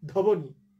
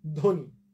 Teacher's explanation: এই যে ব্র্যাকেটে আমরা লিখে দিয়েছি ধ্বনি, ধতে একটু জোর পড়লো, ধ্বনি, ধতে একটু শ্বাসাঘাত হলো, একটু স্ট্রেস পড়লো, কিন্তু বফলার উচ্চারণ হলো না